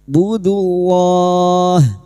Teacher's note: lam jalalah yang didahului dhamma kita baca tafkhim sambil kita wakafkan 4 harakat kita panjangkan budullah.